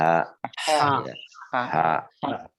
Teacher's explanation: Jadi tenggorokan bagian tengah, Bapak-bapak. Sifatnya nafas berhembus. Nah, tadi jim nggak berhembus, ha berhembus.